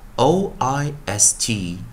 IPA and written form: ɔɪst (-oist)